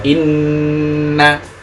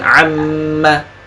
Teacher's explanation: Artinya nun mim tasydid ini yang paling sempurna gunanya. Nun dan mim tasydid yang paling sempurna dan paling berasa masuk hidung. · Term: masuk rongga hidung